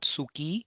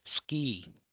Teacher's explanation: So the vowel has been devoiced. The vowel u in this sue has been somewhat devoiced. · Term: devoicing